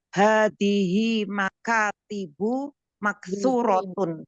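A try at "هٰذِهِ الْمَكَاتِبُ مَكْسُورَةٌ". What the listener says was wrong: alamnya dibaca hadihil makatibu.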